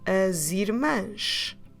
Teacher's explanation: putting the as along with the irmãs with the sound z to make the connection between the two words. As irmãs. Keep your mouth open at the end.